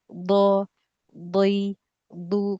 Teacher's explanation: nanti latihan di do memang kita rasakan lidahnya mundur mundur ke belakang do di do dii du du kalau enggak mundur itu susah dia ketemu ee tepi lidah bagian belakang sama itu susah ketemu kalau kita enggak tarik undur lidahnya sedikit ke belakang.